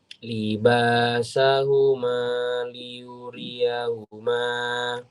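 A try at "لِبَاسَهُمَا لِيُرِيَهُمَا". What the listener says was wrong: Betul.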